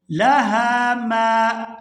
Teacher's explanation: ہا کو الف مدہ کی وجہ سے کھینچ کر ادا کریں گے